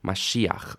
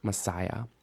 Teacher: Greek had already deleted the sh and turned it into a sa by that point